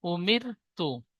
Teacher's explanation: জের এসেছে জেরটি হারাকাত হারাকাত তাড়াতাড়ি পড়তে হয় টান দেওয়া নিষেধ র সাকিনের ডান দিকে জের এসেছে তাই রকে বারিক করে পড়তে হয়